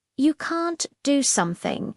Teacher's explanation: Notice the contraction can't. In spoken English, the T is often subtle, but the stress on can't is what gives it power.